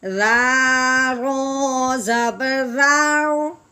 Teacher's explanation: رو موٹی ہے لیکن رال کو زور کر کے موٹا نہیں کرنا، بلکہ رال کو باریک کرنا ہے، رو کو پر کرنا ہے